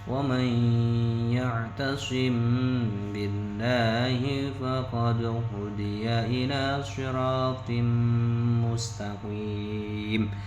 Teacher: Karena ba dan mim itu terletak pada bibir. Nah, jadi ikhfa syafawi artinya adalah menyamarkan bacaan huruf tadi, huruf mim pada bibir dan disertai dengung · seolah-olah huruf mim matinya itu tidak terbaca, langsung masuk kepada ba